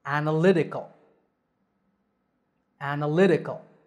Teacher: the word analytical has five syllables and the stress is on the third